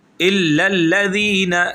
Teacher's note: زینہ نہیں کریں گے، زی کی آواز نہیں نکلے، وہی ذال جو ہم نے تعوذ کے اندر پڑھا۔